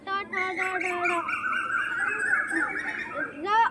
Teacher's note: ट वर्ग ट ठ ड ढ ढ र और मूर्धन्य सा बोले जाते हैं मूर्धा से